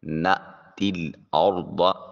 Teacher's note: نأتی، اب تی میں دیکھیے یا کے اوپر نیچے کچھ بھی نہیں، تا کے نیچے زیر ہے، اور اس کے بعد العد میں لام ساکن ہے تو تا کو براہ راست لام سے ملائیں گے · را کو مفخم موٹا اور پر کر کے ادا کریں گے، اس لیے کہ را ساکن ہے اور اس سے پہلے والے حرف کے اوپر زبر ہے۔